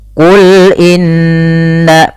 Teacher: ada bacaan gunah yaitu huruf nunnya ditahan dua harakat · alirkan ketika melafalkan lam, jangan tebal, jangan qul, tapi sesuaikan dengan makhraj lam itu tipis. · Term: gunnah